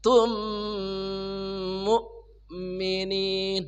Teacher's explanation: Mim mati ber mim idgham mimi idgam mlain shiroin maal gunah atau bil gunah. Dibaca dengung ya mim pertamanya kemudian dimasukkan ke mim kedua.